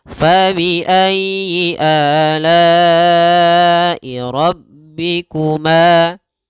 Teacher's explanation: rabbikuma pada lafal ma ada mad tabi'i panjangnya 2 harokat.